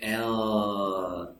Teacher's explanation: air comes from the sides, from the lateral sides of the tongue. When you pronounce the L, you say L, and the air comes from these 2 holes that are made between the tip of the tongue and the alveolar ridge. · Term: lateral sounds